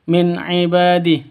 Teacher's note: Nun mati bertemu dengan Ain jelas terang tidak boleh dengung ya tidak boleh disentak